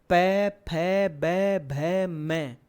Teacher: पै वर्ग बोलो, दोनों होंठ आपस में चिपकेंगे पूरे